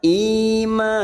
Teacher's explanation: Bil ima, i kasar bertemu ya sukun 2 harakat. Imanilai, ma fathah diikuti alif 2 harakat.